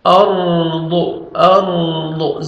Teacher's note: را کو پر کریں گے، ضاد کو موٹا کر کے پڑھیں گے